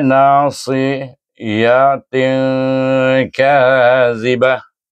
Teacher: dibaca dengan dengung 2 harakat. Jangan tak dengung pula. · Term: ihfa hakiki sugra